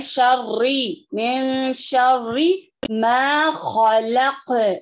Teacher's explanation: من شری را مشدہ کے ساتھ ہے، اس میں تکرار ہوتا ہے.